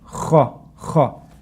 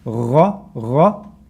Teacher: The kha is closer to the opening of your mouth. Gha is a little bit deeper.